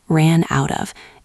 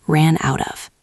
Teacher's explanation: Listen to the linking again. Ran out of. It sounds like one long word.